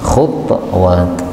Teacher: Yang pertama pada ayat 21 Allah mengatakan khutuwat, ini ta-nya boleh disukun khutwat